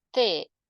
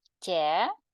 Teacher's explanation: Тобто ти звичайна і тє пом'якшена м'яка м'яка приголосна